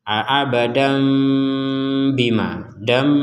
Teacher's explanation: kita baca abada Kalau berhenti Kalau digabungkan maka kata abadan ini tanwinnya Ini digabung kepada ba sehingga menghasilkan kita harus membacanya abadam Ada denggungannya abadam Bima Dam bukan dan lagi Sekali lagi bukan dan d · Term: dengungannya